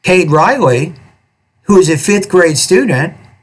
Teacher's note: right after Kade Riley when I had the pause there my tone went up · So did you notice that right after Cade Riley, when I had the pause there, my tone went up? And then when I read this non-restrictive element, my tone also was slightly higher at the end, and I had a pause, and then it said got straight A's on his last report card. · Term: change in intonation